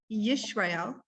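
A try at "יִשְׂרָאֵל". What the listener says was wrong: No, it's an S. Hold on, let me do it here. It's an S, regular S.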